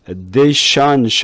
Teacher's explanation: addition 할 때 TION은 션 소리로 바뀌었죠. 여기에 앞에 이거를 중성모음으로 바꾸게 되면 어떻게 되냐면 addition이 아니라 addition 이렇게 짧게 나요.